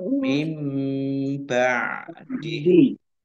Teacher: nun sukun bertemu dengan huruf ba bacaan iqlab dibaca membalik nunnya dibaca mim